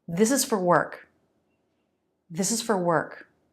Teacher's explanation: is and for are not fully pronounced